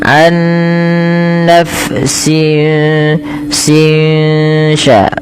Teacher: suara nunnya disamarkan kepada huruf setelahnya sehingga ya dia membaca antara izhar dengan idgam yaitu tidak dimasukkan dan tidak diperjelas tapi di antara kedua-duanya. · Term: ikhfa hakiki